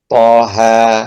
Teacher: mad tabi'i, panjangnya yaitu 2 harokat ya